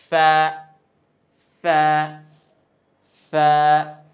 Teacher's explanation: নিচের ঠোঁটের পেট সামনের উপরে দুই দাঁতের আগার সঙ্গে গিয়ে লাগিয়ে উচ্চারিত হয়।